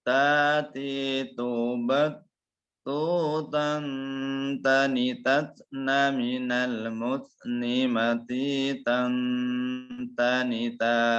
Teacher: Ya, jadi berbeda dengan huruf ba. Huruf ta itu ada nafas yang keluar ya.